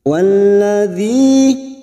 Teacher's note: Kasrah bertemu ya sukun 2 harokat.